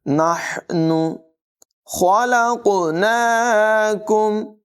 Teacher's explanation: خا کو پر پڑھیں گے، قاف کو بھی پر آواز میں پڑھیں گے